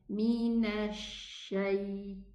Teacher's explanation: It's a mixed sound between the sheen and the seen, while it should be pronounced from the middle part of the tongue